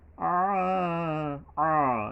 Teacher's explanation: আ, আ, গলা চেপে আইন উচ্চারণ করতে হবে, একালি পরিমাণ টানতে হবে, খারা জবর আছে এখানে।